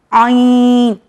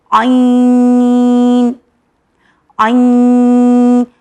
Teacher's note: जहाँ से हमने निकाला हा, वहीं से निकलेगा आइन। आइन यानी हमारे हलक के मिडल पार्ट से निकलेगा आइन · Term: हुर्फ़े हल्की